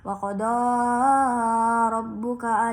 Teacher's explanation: di huruf ra dibaca tafkhim sebab berharakat fathah